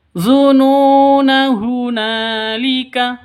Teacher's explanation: Ya, ketika waqaf maka alifnya ini dibaca kalau waqaf. Kalau wasol maka tidak dibaca alifnya. Jadi nunnya dibaca pendek.